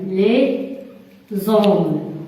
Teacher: On fait une liaison entre la dernière lettre du premier mot avec la première lettre du deuxième mot.